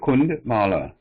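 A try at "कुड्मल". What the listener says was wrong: So see the difference here in the letter. So the one which is written here is with a dot here, and here there is no dot. So if there is a dot in, then the pronunciation is nga. So here there is no nasal sound. It is a da. This one is da. So it is Kudmala. Kudmala.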